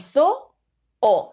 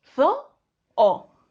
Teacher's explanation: Tenemos dos vocales que están seguidas, pero que forman parte de sílabas diferentes. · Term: hiato